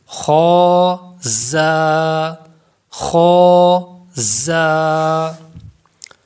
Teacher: زا کو پڑھیں گے تو اس میں سیٹی کی آواز پیدا ہوگی، یہ حروف صفیریہ ہے